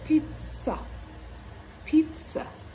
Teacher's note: This word is pronounced pizza, pizza. So the two Z's in this word are transcribed as the T and the S.